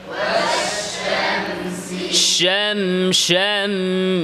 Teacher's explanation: মিম তাওয়াসসুত বাইনিয়া, আওয়াজ সামান্য জারি। আল জারায়ানুল জুজই লিস-সাউত, আওয়াজ সামান্য কি থাকবে, জারি থাকবে।